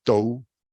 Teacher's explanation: La primera sílaba es tou, que es pesada, porque tiene diptongo.